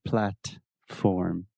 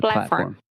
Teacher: I didn't pronounce the T. Yeah, well, you used what we call a stop T.